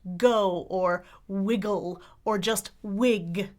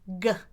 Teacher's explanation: the sound that's formed in the back of your mouth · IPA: /g/